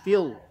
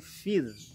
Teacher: huruf ra-nya dibaca tipis karena ra-nya jatuh setelah huruf yang dibaca kasrah. Fir, ya, tipis, bukan fil tapi fir.